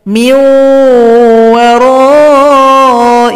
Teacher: Kenapa waw dengung? Terbawa sifat huruf nun, itu huruf dengung. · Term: idgham bi gunnah